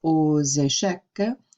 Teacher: Now, when we say aux échecs, notice that we are going to be doing that little liaison that we have talked about before, where normally AUX just makes the sound O, but we carry it over to the beginning of the next word and we say aux échecs, and we hear that like X sound in there, carry over as a Z.